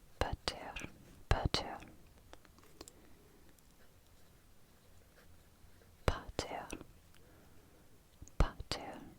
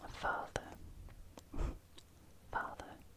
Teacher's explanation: So the P, we can see in the Germanic language, has been changed to an F, the sound. The P that has remained in the Latin has become a F in Germanic